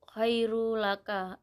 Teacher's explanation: idgham bila guna karena ada huruf nun tanwin bertemu dengan huruf ro. Cara membacanya masuk dengan tidak mendengung.